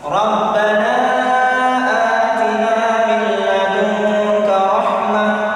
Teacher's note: nun sukun bertemu dengan huruf lam. Nah, jadi dibaca idgham bila gunnah